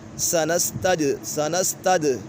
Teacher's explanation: دال کے اوپر قلقلہ ہو رہا ہے